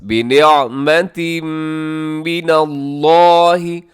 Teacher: ہے، فانقلبوا بنعمة من اللہ، بنعمتن کے نیچے تنوین ہے اور تنوین کے بعد میم ہے، یہاں پہ ادغام کریں گے غنے کے ساتھ